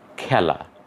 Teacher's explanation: আপ্রত্যয় যুক্ত হলে সেই এর উচ্চারণ অ্যা হয়ে যায়